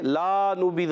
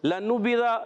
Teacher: اور ہا کے نیچے کھڑی زیر ہے، ایک الف کھینچنا ہے. لنبذ، لام پر زبر ہے، اس کو کھینچنا نہیں